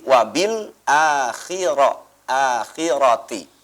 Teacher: getaran daripada ro itu hanya 2 getaran ya. Jadi jangan berlebihan ya.